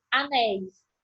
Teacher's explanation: na pronúncia, eu já percebo que eu tenho um ditongo aberto